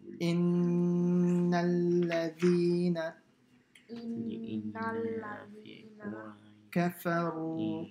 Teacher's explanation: If a nun or mim has a shadda, then you have to do gunna. And what's a gunna? A heavy sound by the nose.